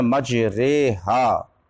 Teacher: direct فتحے کو جھکا دیا گیا یا کی طرف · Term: امالہ کبریٰ